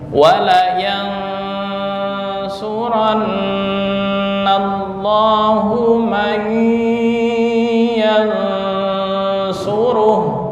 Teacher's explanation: Dengung, suran ditahan temponya 2 ketukan.